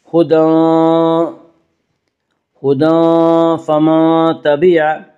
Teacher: ہدی اور فمن تبع یہاں دونوں جگہ میں اخفاء حقیقی ہوگا